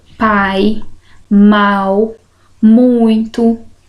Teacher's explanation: eu tenho primeiro a vogal e depois a semivogal ou seja o som mais forte vem primeiro e a vogal com o som mais fraco vem depois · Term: ditongo decrescente